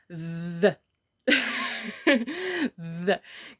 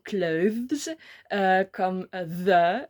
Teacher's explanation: Pour le TH bruyant, on met la langue entre les dents, comme ça. Et on laisse le coussin d'air entre la langue et le palais. Et on fait vibrer nos cordes vocales, tout simplement. Et ça donne the.